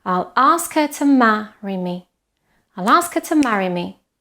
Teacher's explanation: What you need to hear the most is the stressed syllables, ask and ma.